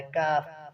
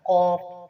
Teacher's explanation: کاف کا مخرج یہ ہے کہ قاف کے مخرج سے ذرا منہ کی جانب ہے